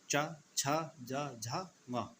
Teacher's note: उसके बाद आते हैं तालव्य, यानी कि जीभ का जो बीच का हिस्सा होता है वो कहाँ लगता है, तालू पर।